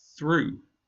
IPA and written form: θruː (through)